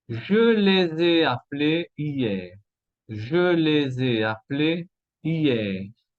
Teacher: Bueno, la primera relación, je les ai, bueno, les es el pronombre complemento en naranja, con du verbe avoir, liaison, eso se llama liaison, ok, después, je les ai appelés, et appelé, aquí tenemos un enchaînement vocalique